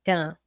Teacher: É como se fosse assim, tã, é nasal, né? Esse N som, ele só nasaliza o A. · Esse N não tem um som, ele só nasaliza o A. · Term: dígrafo vocálico